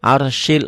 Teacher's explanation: rnya tebal karena sebelum ro mati baris di atas